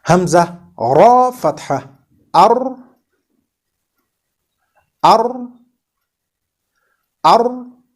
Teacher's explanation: the back side of the blade of our tongue touches the tooth ridge in front